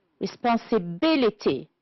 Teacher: the word we have only one which is stressed on the fourth syllable is responsibility